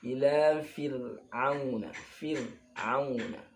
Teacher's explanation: Jadi ra ini irti'adu ra'sil lisan inda nutqi bil harfi. Jadi ketika mengucapkan huruf ra itu lidah bergetar. Nah, getarannya ini dalam kitab itu irti'adatan wahidah.